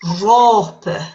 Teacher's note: front of the p for the word rope which is raw there's an h sound in there between the o and the p